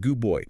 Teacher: The D becomes a B because of the following B. Your mouth doesn't have to work as hard. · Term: Assimilation